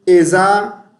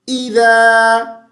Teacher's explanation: اذا. ذال کو پڑھتے ہوئے زبان تھوڑی سی باہر نکالیں گے, زا نہیں پڑھیں گے